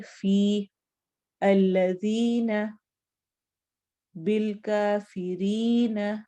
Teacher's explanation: تو 2 حرکت لمبا کر کے ہم یا کو پڑھیں گے اور اسے یا مدہ کہتے ہیں. جیسے کہ فی الذین، بالکافرین، یا ساکن اور اس سے پہلے کسرہ.